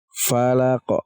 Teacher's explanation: terdengar seperti ada pantulan ada sukunnya tapi kita seperti membaca Koh lagi Falaq kita pantulkan huruf qaf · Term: Qalqalah Kubro